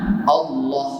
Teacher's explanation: Tak kena tu, tak tepat bacaan dia. Allah, lam dibaca dengan lam taghlid, lam tebal